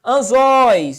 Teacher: Ditongo na posição oxítona